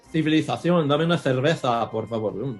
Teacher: they pronounce their C's and Z's with the Castilian TH sound